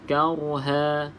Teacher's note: Kauha, huruf ra kita baca dengan tafkhim, bacaan tebal sebab sebelumnya huruf berbaris di atas. Kauha. Okey, ha 2 harakat mad iwad.